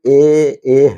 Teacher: ए है वो कंठ से भी बोला जाएगा और तालु से भी बोला जाएगा। इसलिए कंठ तालु दोनों में आएगा इसका।